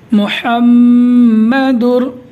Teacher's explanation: تنوین یا نون ساکن کے بعد حروف یرملون میں سے کوئی حرف آ جائے تو لام اور را کی صورت میں بغیر گنہ کے ملا کر پڑھیں گے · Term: ادغام بلا گنہ